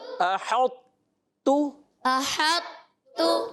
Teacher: تو جب یہ ملے گا تو مکمل نہیں ملے گا تا کے اندر، تو اس کی آواز آئے گی موٹا، مگر اس میں کلکلا نہیں کریں گے آپ